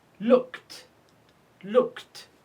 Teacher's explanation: We pronounce ed t because it's preceded by k sound.